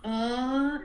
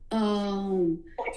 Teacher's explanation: it's ah and then you just close your mouth and it will automatically turn into um